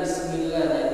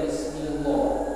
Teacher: huruf sebelumnya harakat huruf sebelumnya adalah kasrah kasr itu baris bawah jadi lafaz Allah ini dibaca di baca tipis